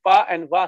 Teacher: my upper teeth are touching my lower lip